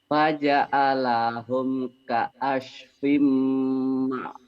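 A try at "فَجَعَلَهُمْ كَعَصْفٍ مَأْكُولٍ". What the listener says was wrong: Nah, Bapak di sini hutang ya sodnya. Sama ainnya hutang.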